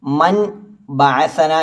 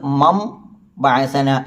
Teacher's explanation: ബാ വന്നാൽ അവിടെ ഇഖലാബ് ചെയ്യണം അഥവാ മീം ആക്കി അവിടെ മറിക്കണം അഥവാ സാക്കിനായ നൂനിനെ അവിടെ മീം ആക്കി ഉച്ചരിക്കണം മീമിന്റെ മഹ്റജ് ഏതാ രണ്ട് ചുണ്ട് മമ കണ്ടോ രണ്ട് ചുണ്ടുകൾ മുട്ടുമ്പോഴാണല്ലോ മീം · അഥവാ മീമാക്കി അവിടെ മറിക്കണം. അഥവാ സാക്കിനായ നൂനിനെ അവിടെ മീമാക്കി ഉച്ചരിക്കണം